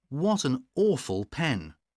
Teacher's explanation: These words, awful and pen, these words are stressed, but look at awful.